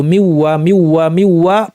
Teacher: মিউ বলার সময় গুন্না, বর্ধিত, একটু লম্বা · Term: বর্ধিত গুন্না